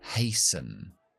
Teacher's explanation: La T no se pronuncia. Empezamos con la A, terminamos con la schwa.